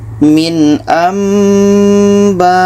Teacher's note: 44 ini di sini ada nun mati bertemu ba Ini iqlab bunyi Nun kita tukar kepada bunyi mim dan kita dengungkan · bunyi Nun tidak ada lagi ya kita tukar ke mim